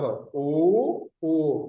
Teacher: कंठ और होठ से बोले जाते हैं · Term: कंठोस्ट